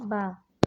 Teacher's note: द्वयोष्ठ है, स्पर्श है, अल्प प्राण है, घोष है, निरनुनासिक है